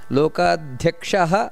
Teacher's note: ಧ್ಯಾ ಅನ್ನುವಂತದ್ದು ಮಹಾಪ್ರಾಣ ಅದನ್ನ ನೆನಪಿಟ್ಟುಕೊಳ್ಳಬೇಕು